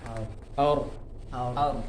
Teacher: Ya, jadi lidah belakangnya agak naik kayak kita mengucapkan huruf sh. · lidah belakangnya naik atau suaranya naik ke langit-langit atas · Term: tebal